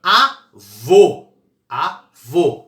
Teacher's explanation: o eu falo avô avô é duas sílabas a e vou qual que é mais forte é a última avô é oxítona